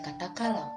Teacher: Pada kata kalau, A seolah-olah berakhiran W, sehingga dilafalkan AU. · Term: Diftong AU